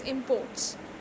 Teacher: is p-o-r-t china must produce more food to reduce its imports here it is used as a noun so import in this case the stress is on the first one